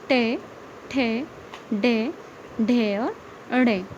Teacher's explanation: टै वर्ग कहाँ से बोला जाता है? मूर्धा से। मूर्धा इसका उच्चारण स्थान है।